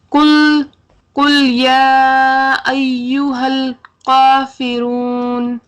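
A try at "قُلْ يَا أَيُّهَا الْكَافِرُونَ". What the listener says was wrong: آپ نے کرنا یہ تھا کہ اس کو موٹا کرتے، آپ نے اس کو باریک کر دیا. آپ کو کرنا تھا اس کو باریک کرتے، آپ نے اس کو موٹا کر دیا. یعنی بالکل الٹ الٹ ہو گیا یہ تو.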